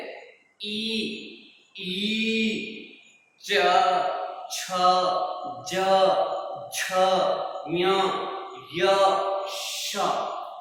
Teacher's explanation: चवर्ग में च, छ, ज, झ, य, ये सारे वर्ण, य, श, इन सब का उच्चारण स्थान है तालु